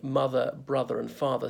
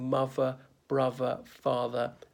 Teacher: Londoners speaking cockney that's a working-class London accent can't pronounce the th